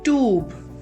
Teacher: The longer vowel sound of U here becomes oo